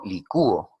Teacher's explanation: en licúo, ahí vemos que sonaría más la vocal cerrada